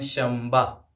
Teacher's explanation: جیسے اردو اور عربی میں بولا جاتا ہے شنبہ، دراصل یہ شنبہ نہیں ہے بلکہ ہے شنبہ، یعنی نون کے ساتھ لکھا جاتا ہے لیکن نون جو ہے میم میں تبدیل ہو جاتا ہے۔ لکھتے تو شنبہ ہے لیکن پڑھتے ہیں شنبہ، یعنی میم پڑھتے ہیں۔